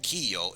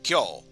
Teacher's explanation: you fuse the yo with the key so instead of kiyo it's kyo